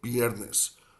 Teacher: they'll say viernes like a B, like pushing the sound out, sort of in an equilibrium fashion from like both top and bottom of the mouth, and not bringing the lip and the teeth together